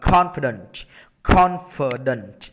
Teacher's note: Tất cả những từ này em nhấn âm 1 cho thầy